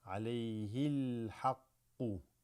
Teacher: the alif drops here, to go straight to the lam.